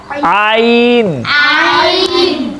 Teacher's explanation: आइन बारीक है जी, आइन बारीक के हलक से पढ़ा जाएगा